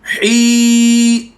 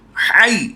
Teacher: ही लंबा करके पढ़ रहे हैं, है इसे लंबा नहीं कर रहे